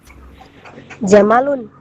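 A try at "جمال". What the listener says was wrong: Panjang memnya. Kalau unta itu pendek semua. ya, jamalun kalau meme-nya panjang jamalun itu artinya keindahan. Kalau panjang jamalun artinya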